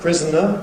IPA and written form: ˈprɪzn̩ə (prisoner)